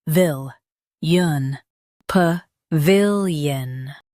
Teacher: Stress vil and keep p light. Yun is soft.